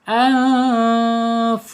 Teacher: Di sini ada nun sukun menghadapi huruf fa. Ya, bacanya ikhfa hakiki ya, harus dibaca samar dan ditahan 2 harokat